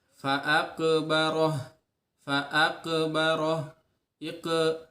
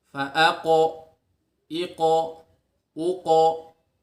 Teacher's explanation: tebalkan pantulannya ke huruf o atau pantulannya ke qaf fathah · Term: tafkhim